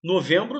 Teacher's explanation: Esses dois EM aqui formam um som só, que é do E nasalizado. Entendeu? É como se o E viesse com tio.